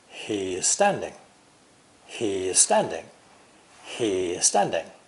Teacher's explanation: Emphasize the E of he's. This makes the S of standing sound like Z, S. He's standing.